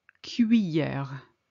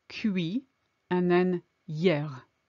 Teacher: I know this is difficult to pronounce, but split it in two, cuit and then hier. Imagine the double L is a Y. I don't want to hear any L sound in there.